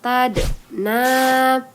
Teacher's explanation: huruf Dal yang bersukun dipantulkan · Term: Qalqalah sugro